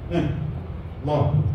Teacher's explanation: Lam ni dia bunyi tebal bila dia terlibat dengan lafzul jalalah. Allah, bunyi tebal.